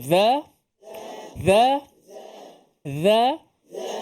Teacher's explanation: makhraj dha ni sama dengan tha dan zal. Cuma beza sifat dia kuat, tebal. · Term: huruf dha